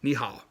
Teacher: there's a tone change rule where it goes from a third tone becomes a second tone if it's back to back